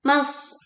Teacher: shad sukun dibaca ditekan mengalirkan suara dan angin tebal ya. Dan terdengar bunyi suruit yang tajam saat dibaca.